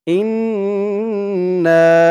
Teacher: ইন বলে গুনাহ করতে হবে